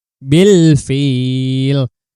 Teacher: Bil fil ini adalah alif lam qamariyah. Alif lamnya dibaca dengan jelas karena bertemu dengan huruf fa.